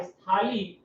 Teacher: स्थाली के उच्चारण में स पर अधिक बल पड़ता था, और इसी वजह से इस सा का उच्चारण में बाद में समाप्त हो जाता है, और कितना बचता है, केवल और केवल आज थाली ही बचता है उच्चारण में। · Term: बलाघात